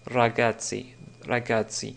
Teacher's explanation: c'est le R roulé de l'italien